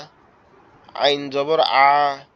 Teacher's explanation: একটু আওয়াজ মতো হবে, আইনের আওয়াজ একটু গলা চেপে হবে